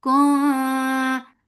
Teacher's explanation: This ikhfa is light. You're preparing your mouth to say fa, letter fa, and you're keeping the sound in your nose.